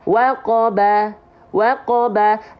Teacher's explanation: dari bibir kan merapatkan kedua bibir selesai itu huruf ba